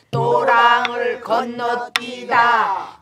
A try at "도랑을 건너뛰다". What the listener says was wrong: 도랑이 네 번째 박에서 나와야 돼요.